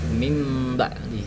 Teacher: Nah, sebenarnya eh sebenar ee jika dari contoh tadi mim ba'di, cara membacanya itu adalah bukan min ba'di, cuman dibacanya itu mendengung seperti mim ba'di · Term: iqlab